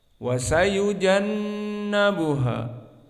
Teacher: maka nun musyaddadah hukmuhu wujubul gunnah, maka digunakan di sini dan makhrajnya dari khaysum dan dia dua harakat